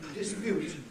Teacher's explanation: the word dispute, with a stress on the second syllable